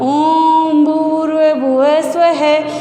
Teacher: उसमें हमारे श्वास की मात्रा लघु की अपेक्षा 3 गुना लग रही है